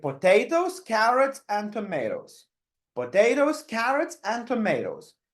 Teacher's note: the first two options The Voice goes up up and the third option goes down